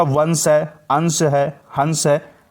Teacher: अनुस्वार का उच्चारण जो है नाक से किया जाता है, यानी ध्वनि जो है वो नाक से निकलती है।